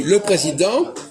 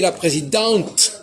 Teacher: On ne prononce pas le T au masculin et on le prononce au féminin.